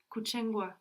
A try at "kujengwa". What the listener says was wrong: Now you're sounding very much like a ch. It's much softer. Put your tongue further back so you are saying like kujengwa, kujengwa. And you're opening your mouth more, kujengwa. The ch and the j in English as well, they're very close. We don't think about it because ch and j look so different, no?